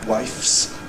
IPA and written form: waɪfs (wifes)